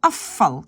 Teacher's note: je prononce afval, comme s'il y a deux F. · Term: assimilation progressive